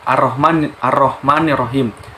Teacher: alifnya itu seperti di diberi dokter Fatah dan lamanya sementara itu lamanya itu tetap tidak dibaca atau seperti tidak ada karena langsung dileburkan ke huruf Syamsiah nya seperti pada contohnya pada ayat arrohmanirrohim jadi cara membacanya itu ar-rahman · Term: alif lam syamsiah